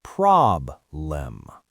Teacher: the stress is on the first syllable, prob-lem, so that letter E becomes a schwa